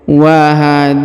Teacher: Huruf na dibaca panjang 2 harokat karena di atasnya terdapat alif kecil.